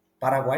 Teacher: Paraguai esse tritongo estabelece uma relação de três tons em que eu tenho o u que é uma semivogal seguido do a que é uma vogal seguido do I que é uma semivogal